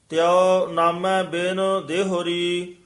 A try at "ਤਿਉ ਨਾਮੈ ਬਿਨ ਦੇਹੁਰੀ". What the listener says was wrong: ਤਿਉ ਨਾਮੈ ਬਿਨ ਦੇਹੁਰੀ, ਇਸ ਨੂੰ ਦੇਹੁਰੀ ਛੇਤੀ ਬੋਲਣਾ ਹੈ। ਦੇਹੁਰੀ ਹੋੜਾ ਨਹੀਂ ਲਾ ਦੇਣਾ ਹੈ ਇਹਦੇ।